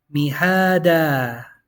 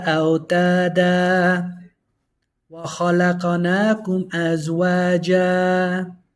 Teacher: So on the fathatain, we extend when we stop. We extend that alif. But only when we stop.